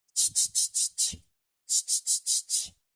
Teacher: звук ч приголосний, вимовляється коротко та відривисто. Отже, проспівати його не можна.